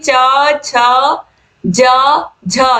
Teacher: च छ ज झ ये जो च वर्ग है यही है स्पर्शी संघर्षी वर्ण